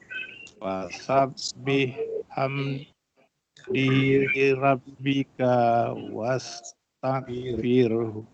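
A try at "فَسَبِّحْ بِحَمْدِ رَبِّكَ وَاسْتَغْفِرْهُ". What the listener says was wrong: Ka tak panjang.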